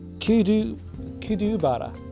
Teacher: the first R has a D sound